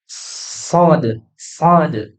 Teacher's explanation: Kalau sin, nih, punggung lidahnya atau lidah bagian belakangnya ini nih, ya, nih, bagian lidah belakangnya ini dia tidak diangkat kalau sin. Tapi kalau sod, sod itu lidah bagian belakangnya diangkat.